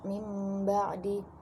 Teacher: tanwin bertemu huruf ba yang berubah menjadi mim dan disertai dengan gunnah